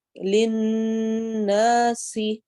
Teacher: للناس، نا الف مدہ، سی سیٹی والا حرف ہے، اور نون کے اوپر شد ہونے کی وجہ سے ہم یہاں پر غنہ کریں گے